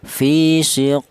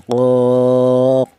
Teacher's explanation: huruf qalqalah yang mati matinya asli tidak disebabkan karena wakaf ini namanya qalqalah suhro cara bacanya dipantulkan